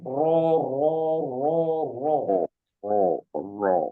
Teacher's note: jadi ditebalkan pangkal lidahnya